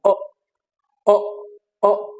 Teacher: that is being produced at the back and your mouth is open